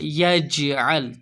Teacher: جیم کے اوپر ساکن آیا تو یہاں پر قلقلہ ہوگا